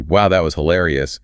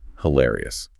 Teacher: To deploy the word correctly, your vocal pitch must rise. Your eyebrows naturally lift.